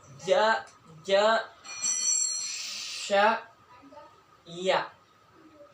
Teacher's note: keluar jadi tengah lidah bertemu dengan langit-langit, ya. Kaidahnya wasutul lisan wa ma yuhadihi minal hanakil a'la, pertengahan lidah dengan sesuatu yang berada di hadapan, yakni langit-langit bagian atas, ya.